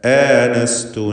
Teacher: ഹംസ വ്യക്തമാക്കി ഉച്ചരിക്കുക. ഹംസയുടെ അലിഫിലും തർക്കീഖാണ് വേണ്ടത്.